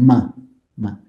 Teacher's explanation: a nasal sound what sound you get if you use the lips and your nose you get ma so for example the labial nasal sound is the ma sound